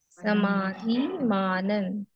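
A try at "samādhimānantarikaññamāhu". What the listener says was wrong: Samadhi manantarikanya. I mean, say it in one word. Samadhi manantarikanya. Then you will not mistakenly say two A's.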